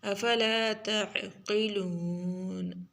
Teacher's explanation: قاف کو موٹا عین کو نکال لیں گے